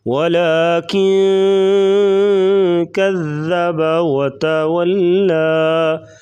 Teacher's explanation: اخفاء مع الغنہ یعنی ناک میں آواز چھپا کر غنہ کریں گے